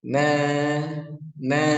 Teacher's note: fathah yang berdiri seperti ini dia panjang dua harakat na na Cukup dua harakat tidak boleh kepanjangan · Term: fathah berdiri